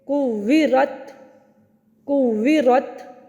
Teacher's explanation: جب آپ وقفاً پڑھیں گے جیسے کہ کویرت کویرت, اب کیا ہوگا کہ پہلے شدت والی صفت ادا ہوگی رت, اور پھر آخر میں ہمس کی ادا ہوگی تھ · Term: شدت اور ہمس